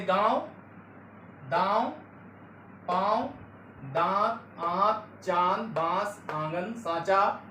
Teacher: अनुनासिक के उच्चारण में नाक से बहुत कम सांस और मुंह से ज्यादा निकलती है।